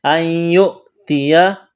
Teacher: نون ساکن کے بعد یا ہے تو نون کا یا میں ادغام کریں گے، غنہ کریں گے